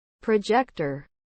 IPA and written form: prəˈdʒɛktər (Projector)